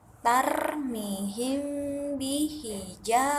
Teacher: makhraj dari huruf hijaiyah mim dan ba adalah pertemuan bibir bawah dan bibir atas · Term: Ikhfa Syafawi